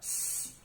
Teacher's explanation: Berarti bunyi S itu nama ilmiahnya adalah alveolar, frikatif, voiceless